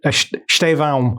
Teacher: Portuguese people tend to like almost add like an M at the end of that sound, so it's like Estevão.